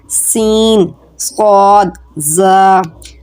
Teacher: تو اس میں ایک سیٹی کی آواز کی خصوصیت پائی جاتی ہے ان حروف میں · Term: حروف صفیریہ